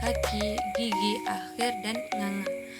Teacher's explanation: dihasilkan oleh pangkal lidah atau disebut sebagai dorsum yang menyentuh langit-langit lunak atau velum. Biasanya termasuk bunyi-bunyi latupan dan sengau di bagian belakang rongga mulut.